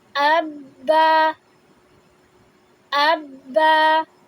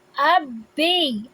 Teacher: اس میں ہم نے صرف ایک حرکت رکھنی ہوتی ہے، لیکن تشدید کی وجہ سے ہم اس میں پورا ٹائم دیتے ہیں، کیونکہ ہم نے اس کو 2 دفعہ پڑھنا ہوتا ہے۔